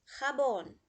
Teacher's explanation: Jabón é uma aguda, porque tem a última sílaba tônica, e leva acento, porque é uma aguda terminada em N.